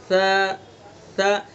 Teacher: اس میں نرمی سے ادا کرنا ہے اس کو، ت ت، صرف زبان کی نوک کو ثنا علیہ کے کنارے پر لگائیں گے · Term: ثا